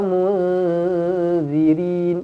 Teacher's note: Nun kosong bertemu zal, ikhfa hakiki, didengungkan 2 harakat. Rin boleh dibaca dengan 2, boleh dibaca dengan 4 ataupun 6 harakat.